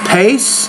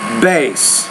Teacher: when the bees at the end the vowel sound is longer because the P is a voiceless consonant and the B is a voiced consonant